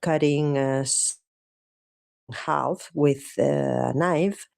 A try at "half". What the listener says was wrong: Cuidado, no half. La L es totalmente muda, como en walk, talk, half.